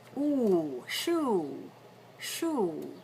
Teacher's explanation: rounded lips stay forward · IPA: /uʷ/